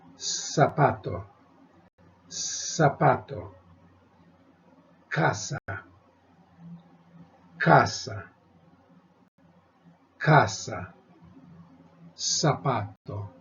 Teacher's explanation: pronounced the same with a hiss as opposed to a buzzing bee sound Z none of that so it's just s whether it's an